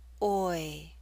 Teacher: we're using a slight Y sound, y, to make this glide possible.